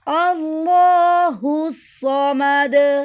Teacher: صاد کو ہم موٹا پڑھیں گے، آگے ہا کی ساؤنڈ، مد، میم کو ہم دونوں ہونٹوں کو خشک کی سا ملانے سے میم کو ہم ادا کریں گے، آگے دال کو ہم وقف کی صورت میں ساکن دے رہے ہیں تو اس پر کلکلا کریں گے · اللہ کا لام موٹا پڑھیں گے کیونکہ اس سے پہلے زبر ہے۔